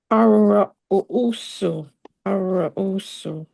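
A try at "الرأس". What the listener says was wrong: Ra. There's like a sukoon on a hamza, so it's like ra. Ar-ra'su.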